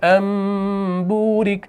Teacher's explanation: اس نون ساکن کے بدلے میں ہم اس میم کا تلفظ کرتے ہیں، یہ ہوتا ہے اقلاب